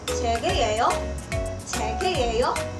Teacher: In English, we change the word order, but in Korean, we just raise the intonation.